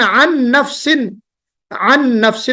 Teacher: جو نون کی آواز آ رہی ہے وہ اس پہلے والے نون کی نہیں آواز آ رہی، بلکہ آگے والا جو نون مشدد ہے اس کی آواز ہے